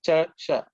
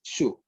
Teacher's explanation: This is the palatal Sha. Okay, where the tongue should be parallel to your palate, the roof of the mouth, similar to Cha, Sha.